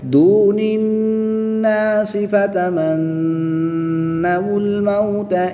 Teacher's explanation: نون مشدد میں ہمیشہ غنہ ہوتا ہے، یعنی غنہ کر کے پڑھیں گے